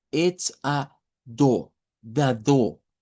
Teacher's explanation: Esa es una característica del inglés británico, que no suena la R al final de una palabra o de una sílaba